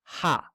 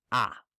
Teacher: rough breathing effectively means that it is pronounced with an H in front of it